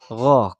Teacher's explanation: Ghain tempat keluarnya ada di tenggorokan bagian atas. Gho, kayak orang ngorok.